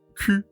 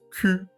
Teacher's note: Esa u que vemos escrita no se va a pronunciar como la decimos en español, sino un poquito como más cerrada en la boca. Q. Mientras que la palabra cuello, esa u que conocemos en español, ese sonido que conocemos en español, u se va a escribir en francés, o u.